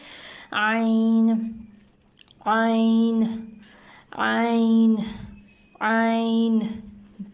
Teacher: اور جب آپ عین کی آواز نکالیں گے تو آپ نے نوٹ کرنا ہے کہ ایک وائبریشن ہوگی، کیونکہ یہ جو عین کی آواز ہے یہ حلق سے نکلے گی